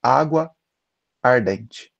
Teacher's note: a gente não pronuncia água ardente duplicando a, a gente funde os dois as. Essa fusão, ela tem um nome, a gente chama essa fusão de crase.